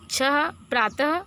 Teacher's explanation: अनुसार की तरह विसर्ग भी स्वर के बाद आता है इसका उच्चारण ह की तरह होता है